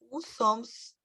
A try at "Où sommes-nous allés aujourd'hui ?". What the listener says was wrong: tira o S. Você não vai pronunciar, ele está lá escrito, mas não vai pronunciá-lo.